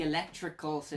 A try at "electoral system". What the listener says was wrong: No, electoral Congress. It sounds like electrical.